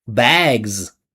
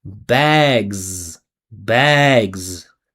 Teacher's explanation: Follow the vibration of the pitch. Follow how it comes down. Follow how it continues with the Z.